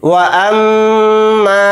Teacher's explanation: मीम के ऊपर तशदीद है तो इसमें गुन्ना करके पढ़ेंगे, और मीम के साथ अलिफ मद्दा है यानी हरूफ मद्दा।